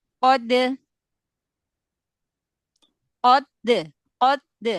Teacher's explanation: Dal kolkolah ya, kolkolah. Kolkolah itu dia syiddah dulu di makhraj huruf dal ya, baru kolkolah.